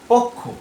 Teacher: কিয় এর যুক্ত ব্যঞ্জনটি সেটি উচ্চারিত হয় ক এবং খ রূপে